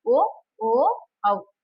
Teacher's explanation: ಹೇಳ್ತೀವಿ ಕಂಠ ಪ್ಲಸ್ ಓಷ್ಟ್ಯ ಅಂದ್ರೆ ಕಂಟೌಷ್ಟ್ಯ ಆಗಬೇಕು ಕಂಠ ಪ್ಲಸ್ ಓಷಟ್ಯ ಅಂದ್ರೆ ಕಂಠನು ಇರಬೇಕು ಮತ್ತೆ ಕುಟಿಗಳು ಸೇರಬೇಕು ಈ ಎರಡು ಪಾರ್ಟ್ಗಳು ಸೇರಿದಾಗ ಈ ಒಂದು ಅಕ್ಷರಗಳು ಉಚ್ಚಾರಣೆಗೆ ಒಳಪಡುತ್ತವೆ · ಇವುಗಳು ಕಂಠನೂ ಬೇಕು, ಓಷ್ಠ್ಯನೂ ಬೇಕು, ಆ ರೀತಿಯಾಗಿ ಉಚ್ಚರಿಸಲ್ಪಡ್ತವೆ.